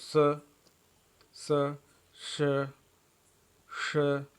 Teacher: स, श, श में एक प्रकार की हिसिंग या संघर्ष है, ध्वनि सुनाई पड़ती है।